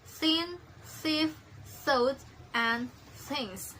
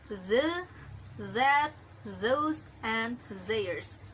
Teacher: th is voiceless dental fricatives, while the is voiced dental fricatives